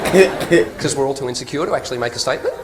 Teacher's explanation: we all go up at the end of every sentence. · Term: Rising inflection